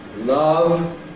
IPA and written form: lʌv (love)